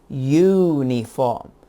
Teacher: the word starts with the letter u but the sound is you not o